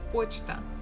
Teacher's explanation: here stress falls on O, that's why we have pronounced it as it is